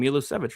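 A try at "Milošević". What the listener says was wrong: Milosevic. See how he's got the accent over the O? It's Milosevic. So yeah, the second syllable is accented. Milosevic.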